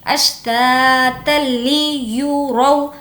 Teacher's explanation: यहाँ पर ता को लाम से मिलाएंगे। अश्तातल ली, लाम ज़ेर ली, अश्तातल ली युरौ, या पेश यू, रा वाव ज़बर रौ, वावलिन होगा नहीं खींचेंगे।